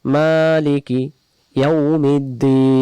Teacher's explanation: আমরা দিন এটা টান দেব, কয় আলিফ টান দেব? 3 আলিফ।